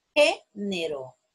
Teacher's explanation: género es una palabra también esdrújula porque la sílaba tónica la tiene la antepenúltima sílaba